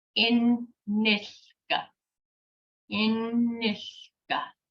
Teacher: And there's two N's. We hold the N's just like bus stop.